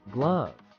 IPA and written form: ɡlʌv (glove)